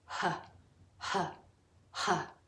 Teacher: The H is airy and aspirated